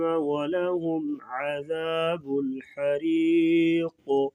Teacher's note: وقفاً قاف کو موٹا بھی کریں گے اور قلقلہ بھی ہوگا